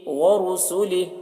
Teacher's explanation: را کو پر پڑھیں گے، را کے اوپر پیش ہے، را کے اوپر پیش ہے، اور یہاں پر علامت ہے قف، یہاں پر ٹھہر جانا چاہیے، تو یہاں پر ٹھہر جائیں گے تو ہا کی جو کھڑی زیر ہے یہ سکون سے بدل جائے گی۔